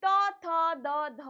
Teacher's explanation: त वर्ग का उच्चारण स्थान क्या होता है बेटा, दंत होता है